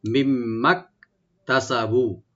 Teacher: দ্বিতীয় মিমে যে তাসদিদ আছে এখানে আমরা একটু গুন্না করে কাপের সাথে মিলাবো , যে নেক্সট শব্দ যেটা আছে কাপ সাথে মিলে যাবে, মিম্মাকতাসাবু,